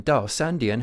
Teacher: in this case e is followed by a dipping tone character a third tone character so it becomes a falling tone